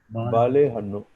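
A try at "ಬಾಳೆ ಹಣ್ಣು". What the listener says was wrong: Let the l be thicker, please. Bale hannu. The l has to be thick when I put in a capital letter.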